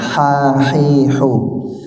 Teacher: Dia bersih, ya, tidak ada getarannya, ya. Ha di tengah tenggorokan, keluar hawanya